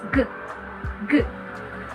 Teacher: It is a voiced velar plosive wherein you are going to block the airflow with the back of our tongue against the soft palate and release a sound in a burst.